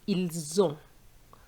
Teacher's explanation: I've linked the s to the O giving me a z sound